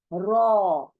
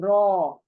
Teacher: यानी मोटा करो, मुंह को मोटा करो, गोल करो मुंह को पूरा, होंठ गोल, अंदर से जबान गोल, पूरा मुंह गोल